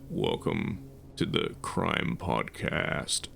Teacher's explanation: people do this very deliberate slow tone of voice with a very particular amount of vocal fry